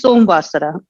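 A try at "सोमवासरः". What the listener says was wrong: Somavasarah. So you can't say Som because that's how you pronounce it in Hindi like that. But in Sanskritam, it has to be Soma. Because if you say Som, then it is Som with a halant.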